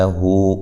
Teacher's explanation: ہو واو مدہ کے قائم مقام ہے، اس کو ایک الف کی مقدار کے برابر لمبا کیا جائے گا۔